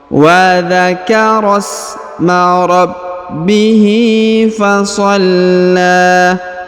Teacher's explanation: Huruf la ditahan dan ditekan karena terdapat tanda tasdid. Lalu dipanjangkan 2 harokat karena di atasnya terdapat tanda alif kecil dan juga di depannya terdapat tanda alif bengkok atau alif maksurah.